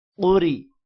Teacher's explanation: را کو موٹا نہیں کرنا کیونکہ را کے نیچے زیر ہے